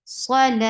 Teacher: A long vowel, and this long vowel will turn into 4 counts long when you give it a stop